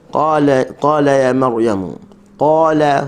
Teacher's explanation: Alif turut menjadi tebal kerana berada di samping huruf qaf. Qala, huruf lam hujung tepi lidah kena dengan gusi. La, buka mulut sambil nak senyum.